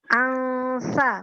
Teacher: Jadi nunnya dibaca di tempat keluarnya huruf sa. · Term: ikhfa